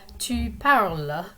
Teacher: that es on the end of tu parles is silent. You don't hear the s there.